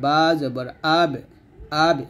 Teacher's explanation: বাটা হলো কলকলা হরফ কলকলা হরফ পাঁচটা কফ ত বা জিম তো এখানে কি করতে হবে কলকল করতে হবে